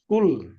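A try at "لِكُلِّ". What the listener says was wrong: আর লামটা দুবার পড়বেন তো, লামের উপর তাসদিদ আছে, লাম দুবার পড়বেন না?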